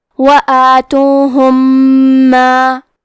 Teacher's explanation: کلمت ما یہاں حکم ہے ادغام متماثلین صغیر تو ہم میم ساکن کو دوسرے میم میں ملا کے ایک ہی میم غنہ اور تشدید کے ساتھ پڑھیں گے